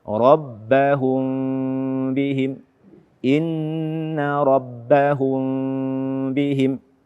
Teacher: hak gunnah pada mim sukun setelahnya ba yang hukumnya adalah ikhfa syafawi